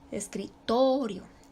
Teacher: No se le pone tilde, no se le pone acento, pero ahí recae la sílaba tónica, en la sílaba to. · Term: acento prosódico